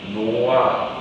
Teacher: 히읗 받침 뒤에 모음 어미가 와. 그럼 어떻게 돼? 히읗이 탈락돼. 마이너스 1 되면서 히읗 되면 탈락되고 있어. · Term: 히읗 탈락